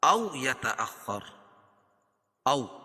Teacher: او واو ساکن سے پہلے زبر ہو تو واو لین ہوتا ہے، اس کو نرم آواز کے ساتھ جلدی ادا کریں گے